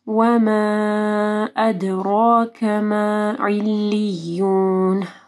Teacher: وما کے اوپر مد ہے، اس کے بعد حمزہ ہے، 4 سے 5 حرکات کے برابر لمبا کرنا ہے